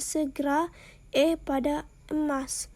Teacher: bunyi yang dihasilkan dengan cara posisi lidah di tengah, caranya rahang atas dalam posisi netral atau biasa, caranya rahang bawah dalam posisi netral atau biasa, misalnya E kebalik pada segera, E pada emas. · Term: bunyi tengah